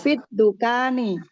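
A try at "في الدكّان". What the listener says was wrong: tasdid di sini tasdid.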